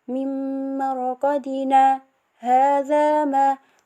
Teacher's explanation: Kita klik waqaf saktah, yakni menandakan berhenti seketika tanpa mengambil napas